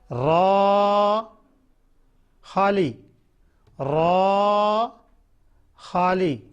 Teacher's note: रा जबान का किनारा और दांतों का किनारा आपस में लगेगा तो रा पड़ी जाएगी रा खाली।